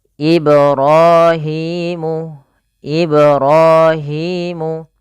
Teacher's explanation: Kemudian Ibrahimul qawa'ida, pada lafal ibra pantulkan huruf ba pada lafal kata Ibrahim, karena pada lafal ba tersebut ada bacaan qalqalah, yaitu memantul.